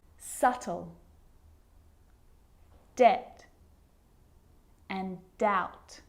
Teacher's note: my lips aren't closing and coming together to form the B sound I'm just pronouncing the T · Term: silent